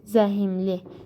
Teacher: Gördünüz, qapalı sait daxil oldu. H ilə m-nın arasına qapalı sait daxil oldu, i daxil oldu.